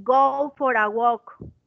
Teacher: Aquí la R se conecta con la A y se hace. Eso es lo que llamamos linking.